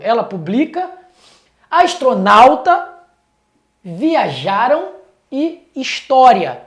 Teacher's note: a tonicidade repousa na penúltima sílaba de todas as palavras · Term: paroxítonas